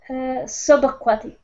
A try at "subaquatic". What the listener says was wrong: Yes, sub. Sub was the key word, because you think you said soup.